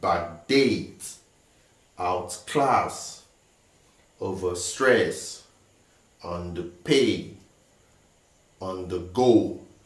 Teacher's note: So all these words, we have the stress on the second syllable or the second word of the compound word. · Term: verb compound words